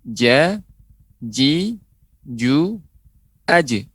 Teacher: Tapi dia menempel, ya, tengah lidah, menempel langit-langit, ya. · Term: huruf jim